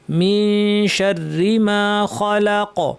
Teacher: খলাক এখানেও কফে কলকলা হবে। এখানে আমরা ইখফা করার সময় একটু টাইম দিব গুন্নাটায়।